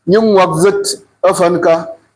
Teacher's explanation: So that k tends to swallow the following n.